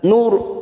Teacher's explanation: Wa ma nursilul masuk pada ro tafkim, karena didahului dhamma maka kita baca tafkim atau tebal.